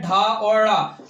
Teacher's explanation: जीभ हमारी क्या मूर्धा को स्पर्श करेगी और फिर झटके के साथ नीचे आएगी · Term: उच्छिष्ट व्यंजन